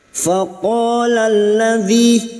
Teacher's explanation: menyesuaikan kemampuan nafaz kita ahum sekarang kita Uraikan pada kalimah faqala qo fathah diikuti Alif dua harakat kita panjangkan